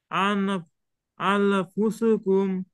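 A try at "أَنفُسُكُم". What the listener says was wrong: এটা কি আন না আং, কোনটা হবে? আং কেন হবে? নুন সাকিনের পরে ইকফার অক্ষর ফা আসছে, এজন্য অনিষ্টার গুন্না দিয়ে বলবো আমরা। আং ফুসুকুম।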